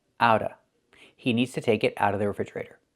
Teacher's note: The T is a fast D and you don't hear the VV sound.